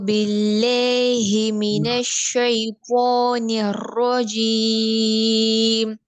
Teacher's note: தால் sound வரணும் துக்கு போகக்கூடாது துக்கு போகக்கூடாது நாக்கு மேல் பல்ல படாம